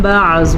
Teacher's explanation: زواد کو پر پڑھنا ہے، زواد حروف مستعلیہ میں شامل ہے